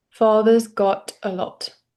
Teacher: I want you to hit the T on got. Okay. Not, don't make it glottal.